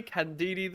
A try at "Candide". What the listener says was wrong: Candide. There's no EDD.